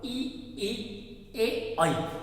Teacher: बोलकर देख सकते हैं, जिह्वा का आगे वाला भाग उत्थापित होगा ई ए आई, तो ये अग्र स्वर कहलाते हैं।